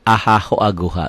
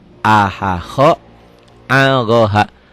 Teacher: huruf-huruf tersebut adalah huruf halki, huruf tenggorokan yang keluar dari halq, tenggorokan